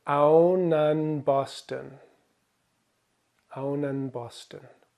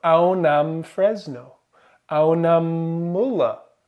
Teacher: Aunan changes to aunam because saying aunam Boston is actually a lot smoother than saying aunan Boston